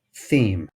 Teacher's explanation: we use a theta for the interdental sound that begins words like theme